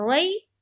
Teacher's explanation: مجہول بھی نہیں ہونا ہے، معروف پڑھنا ہے اور نرمی کے ساتھ پڑھنا ہے اور جلد پڑھنا ہے، کھینچنا نہیں ہے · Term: یائلین